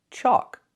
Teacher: It has the AL, where the L is silent. Chalk. It makes the aw sound like walk and talk. Chalk. This is a chalkboard.